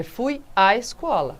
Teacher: A gente não pronuncia esse acento, não pronuncia os dois As. Um só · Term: crase